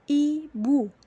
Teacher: Contoh pada bagian close pada posisi lidah di depan atau front, yakni fonem I, terdapat pada kata ibu.